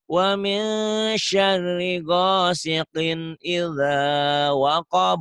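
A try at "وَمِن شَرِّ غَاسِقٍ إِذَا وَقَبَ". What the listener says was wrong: Waqab bukan wahab ya. Waqab, koko, baju koko.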